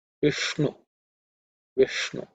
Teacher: make sure that Ish is actually cerebral Sha